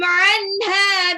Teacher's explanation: 'anha nun sukun ketemu ha, baca jelas ya, izhar.